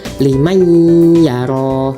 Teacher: Nah, ketika nun bertemu ya, ya ini nun sukun bertemu ya, itu bacanya itu didengungkan ya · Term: idgham bigunah